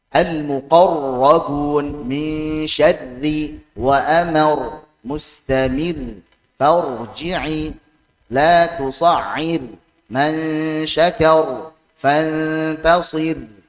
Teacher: Jadi ra tasydid, ra sukun baik saat wasal maupun waqaf, maka ra takrirnya, getarannya harus halus, lembut.